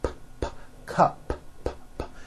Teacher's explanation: It ends with an unvoiced P.